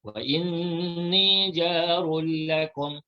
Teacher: Idgham bila gunnah, kita masukkan tanwin ke dalam lam tanpa didengungkan.